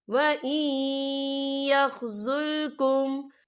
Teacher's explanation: یا جو ہے حروف ملون میں سے ہے تو یہاں پر ادغام ہوگا، تو ہم اسے تھوڑا سا غنے کے ساتھ پڑھیں گے